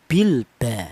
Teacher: Kalau idhar itu jelas, lam matinya dibaca jelas